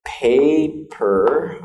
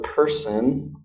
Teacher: You should be able to put your hand in front of your mouth and feel air when you say paper. You should feel air against your hand, okay?